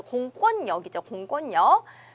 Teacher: 이렇게 이제 말씀을 드렸던 거 생각이 나시죠? 거기서는 유음화가 진행이 되어야 하는데 오히려 요 리을이 니은으로 발음이 되는 현상이라고 했습니다